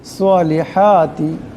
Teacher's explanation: হা এখানে বড় হা আছে, আওয়াজটা গলা থেকে আনতে হবে